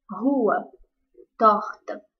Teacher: na palavra torta a sílaba tônica é tor